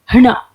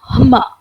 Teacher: इसमें ये गटरल साउंड है जिसमें सबसे ज्यादा सांस बाहर निकलती है। तो ह के बाद न, न, म, य, र, ल, व, अगर इन वर्णों को हम जोड़ते हैं तो ये उच्चारण जो मिलते हैं ये उरस्य ध्वनि होती है